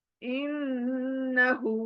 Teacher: नून शदा always गुना मैंने कहा गुनगुना कर नून को पढ़ना है